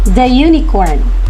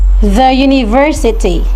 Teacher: It begins with a vowel u but the sound is the consonant y